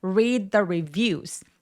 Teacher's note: read할 때 D와 the 할 때 th가 A B C D의 D로 표현된다고 했었잖아요. 그래서 혀의 위치가 너무 가깝거나 혹은 똑같습니다. 그래서 read the더가 아니라 read the 하면서요 첫 번째 D가 디귿 받침처럼 표현해 주시면 돼요.